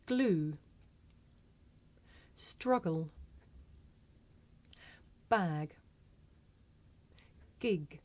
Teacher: Plosive or stop 6 in English is g. This is a voiced consonant. You can hear it at the beginning of the word glue, in the middle of the word struggle, at the end of the word bag, and at the beginning and end of the word gig.